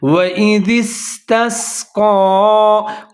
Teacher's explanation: سین کا جو ہے یہاں پر سیٹی بجانی ہے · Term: حروف صفیریہ